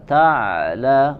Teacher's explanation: Sawfa kemudian huruf ain, ya, dari wasatul halq, ya, dari bagian tengah tenggorokan, ya, sempurnakan dan juga tidak terputus suaranya, bukan ta'lamun tapi dialirkan suaranya ta'la, karena dia memiliki sifat yang mengalir suara, di yang kita kenal dengan bainiyah atau wasatiyah.